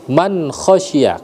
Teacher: Jelas dibaca jelas tidak boleh ghunah tidak boleh samar-samar. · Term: izhar halqi